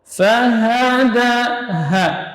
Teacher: Tidak boleh berlebihan dalam penyebutan ha. Jangan sampai ke dada, tapi dia di pangkal tenggorokan. Ha, huruf yang ringan.